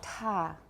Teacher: voiceless aspirated alveolar the initial stop